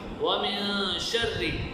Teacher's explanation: نون پر اخفاء ہو رہا ہے، آواز کو ناک میں چھپانی